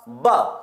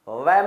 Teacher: बा के उच्चारण में ऊपर का होठ और नीचे का होठ दोनों काम आते हैं लेकिन व के उच्चारण में नीचे का होठ और ऊपर के दांत काम आते हैं इसलिए सही उत्तर इसका क्या होगा बा होगा सभी के लिए